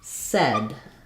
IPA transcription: sɛd